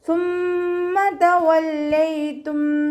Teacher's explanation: സ ലൈറ്റ് ആക്കിയിട്ട് ഉച്ചരിക്കുക കേട്ടോ. കുറച്ച് എയർ പാസ് ചെയ്യണ സൗണ്ടും കൊടുക്കുക. നാവിനെ കുറച്ച് പുറത്തോട്ട് കാണുന്ന രൂപത്തിൽ വെക്കുകയും ചെയ്യുക കേട്ടോ. സീനായി പോവാതെ ശ്രദ്ധിക്കുക.